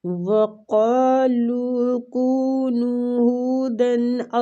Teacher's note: وہ پہ ہونٹوں کو گول کریں گے